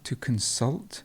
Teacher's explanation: the stress would be at the end